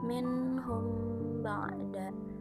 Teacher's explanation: Lalu ada minhum ba'da, hukumnya ikhfa syafawi, sebab huruf mim sukun bertemu huruf ba, dibaca samar dengan dengung dan ditahan selama 3 harokat